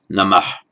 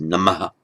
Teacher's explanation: In ancient India, it was probably pronounced without that shadow vowel at the end, most likely pronounced somehow namah. In modern India, it tends to be pronounced namaha, with an echo of the vowel following.